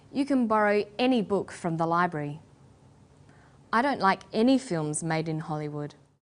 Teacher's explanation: When the word any is stressed, this tells us that we're talking about an unrestricted quantity or unlimited choice.